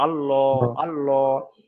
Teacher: যদি জাবার এবং পেশ আসে তাহলে আল্লাহ শব্দটাকে পুর করে পড়তে হবে, এবং পুর করে অর্থাৎ মুখটা গোল করে পড়তে হবে।